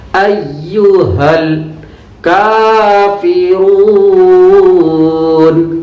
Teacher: لام پر جزم ہے لیکن پلٹ کر آواز نہیں آنی چاہیے